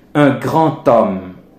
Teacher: Par exemple, quand on voit grand, G-R-A-N-D, alors que D va se changer en T dans la prononciation sous l'emprise de la liaison